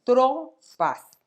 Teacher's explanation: La sílaba tónica está en la penúltima sílaba, por lo tanto es grave, pero termina en S.